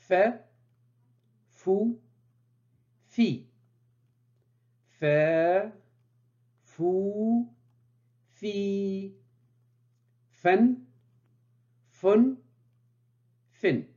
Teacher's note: se prononce au niveau des incisives supérieurs qui se positionnent sur la lèvre inférieur